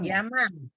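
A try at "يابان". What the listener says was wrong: Yaban. Yaban. Pakai ba.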